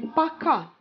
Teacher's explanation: the stress goes to the second syllable